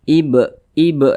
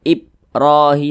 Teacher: Qalqalah sugro karena dia di tengah kalimat jadi pantulannya itu kecil saja